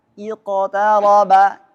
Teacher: Sekarang huruf qaf. Nah, condong ke harakat kasrah, bunyinya iqtaraba. Tetap tebal ya.